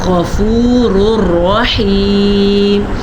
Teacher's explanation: غین کو بھی پر پڑھیں گے کیونکہ غین ہمیشہ ہی حروف مستعلیہ میں سے ہونے کی وجہ سے پر پڑھا جاتا ہے